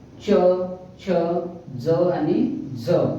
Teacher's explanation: तर च छ ज आणि झ हे चार वर्ण दंत तालव्य आहे याचा उच्चार दंत प्लस तालू या दोघा मिळून बनलेला एक वर्ण आहे